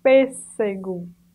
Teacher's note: Pêssego, vem entre vogais, mas tem um som de S, um S forte